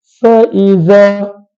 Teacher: Hujung gigi kacip atas yang diletakkan pada bibir bawah. · Maka huruf za adalah hujung lidah diletakkan pada hujung gigi kacip atas. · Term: makhraj fa